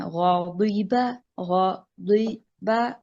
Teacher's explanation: دواد زیر دی غادی، با زبر با غادیبا، اچھا اس میں صاد دیکھیے زبر غین اور ضاد دونوں پر ہے، تو اس کو ہم نے دونوں کو پر کرنا ہے، موٹا کرنا ہے، غاضبہ غاضبہ، با کو پھر باریک رکھنا ہے۔